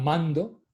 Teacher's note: la n precede al de la consonante oclusiva avelar g y en la palabra mando el sonido de la n precede al de la consonante oclusiva dental de